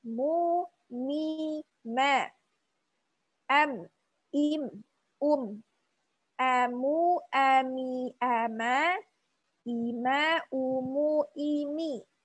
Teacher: makhrajnya dari kedua bibir